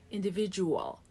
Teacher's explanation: Dark L at the end. Don't touch the upper palate.